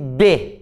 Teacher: o b por exemplo é um fonema bilabial porque eu junto os dois lábios para pronunciar